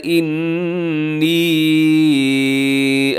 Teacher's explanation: انی نون مشدد بھی ہے اور ساتھ لمبا بھی کرنا ہے